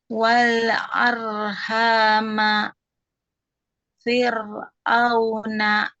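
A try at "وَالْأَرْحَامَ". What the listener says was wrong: Ujung lidahnya. Ujung lidahnya lebih kaku lagi, Om. Jadi dapat ro tebalnya karena ini ro-nya tebal ya, dibaca tebal. Wal arhama.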